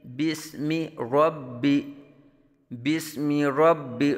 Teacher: را کو پر اور با مشدد میں جماؤ کے ساتھ قلقلہ